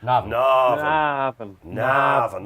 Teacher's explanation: if it's an Irish pronunciation, put the stress on the first syllable as a rule of thumb